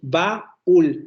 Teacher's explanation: Tenemos una vocal abierta, luego tenemos una vocal cerrada, pero en la vocal cerrada recae el acento